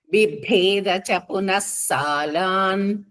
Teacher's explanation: దశయోజనం విభేదచ second భ వచ్చి మహాప్రాణం గట్టిగా పలకాలి